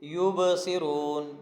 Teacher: با پر قلقلہ ہے اور صاد کو موٹا پڑھنا ہے، را کو موٹا پڑھنا ہے، اور را کے بعد واو مدہ ہے، اس کو لمبا کر کے پڑھنا ہے۔